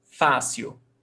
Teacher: Fênix, paroxítona, the stressed syllable before last, termina em X, então, acento. Fácil, paroxítona, the stressed syllable is before last, termina em L, então, fácil, acento.